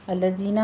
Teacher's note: الذین میں دال کو نرمی سے پڑھتے ہوئے آگے یا مد ادا کریں گے